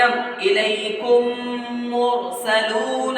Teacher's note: ایسے ہی ادغام شفوی، ادغام میم ساکن کے بعد میں اگر میم آئے تو پہلی میم کو دوسری میم سے ملا کر گنہ کے ساتھ ملا کر پڑھیں گے